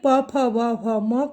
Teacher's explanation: हमारा जो ओठ है आपस में एक दूसरे से स्पर्श करता है, इसलिए प, फ, ब, भ, म को ओष्ठ वर्ण कहते हैं, क्योंकि इसका उच्चारण ओठ से होता है।